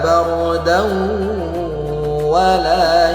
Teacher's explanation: Tanwin berjumpa dengan huruf wa. Maka harus kita dendungkan dua harakat. Hukumnya idgham bighunah.